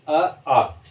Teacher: अ और आ का उच्चारण स्थान जो होता है वो होता है कंठ से।